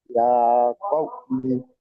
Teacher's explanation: ওয়াও লিনকে নরম আওয়াজে তাড়াতাড়ি পড়তে হবে